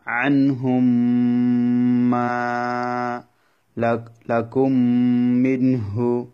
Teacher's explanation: মিম সাকিনের পরে যদি মিম আসে তখন মিমটা মিমের মধ্যে প্রবেশ করা যাবে গুণার সহিত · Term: ইদগাম